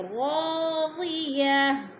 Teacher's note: دو زیر تنوین کو وقف کی صورت میں ساکن کر دیں گے، دو زیر نہیں پڑھیں گے بلکہ ساکن کر کے پڑھیں گے